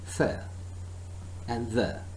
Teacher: Okay? The teeth, our tip of the tongue is touching the inside of front two teeth and producing the sound th and the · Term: dental sounds